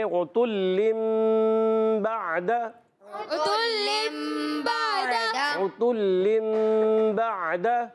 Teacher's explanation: عین کلیئر کریں گے حلق کے درمیان والے حصے سے. با پر زبر ہے، دال پر زبر ہے، حرکات کو بغیر کھینچے بغیر جھٹکا دی معروف ادا کرتے ہیں.